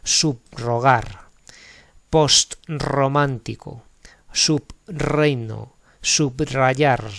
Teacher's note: La R que hay detrás de los prefijos, app, sub, post, pertenece a una sílaba distinta y el sonido que representa es múltiple.